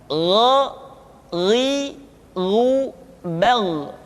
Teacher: Kha mengalir nafas dan Gha tidak mengalir nafas. Dan keduanya memiliki persamaan, yaitu memiliki sifat al-isti'la. Sehingga kedua huruf tersebut ketika diucapkan, suara kita mesti terdengar menebal. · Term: huruf Gha